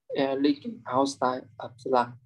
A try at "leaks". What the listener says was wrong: Yeah, I want you to read the leaks word for me because like you are kind of skipping the final sound. So leaks.